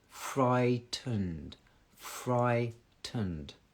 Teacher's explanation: the r sound in so the top uh the teeth touches the bottom lip a little bit further back because you need to get to the r